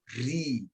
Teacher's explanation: Di sini ada satu kaidah yang mesti difahami oleh setiap penguasa tajwid, bahwa ro yang memiliki harokat kasroh berarti dia tarkik